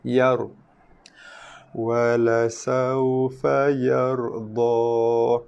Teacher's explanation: huruf ra dibaca dengan tafkhim tebal